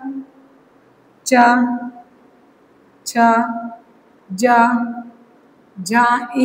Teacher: जीहा का मध्य भाग तालु से स्पर्श कराता है। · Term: तालव्य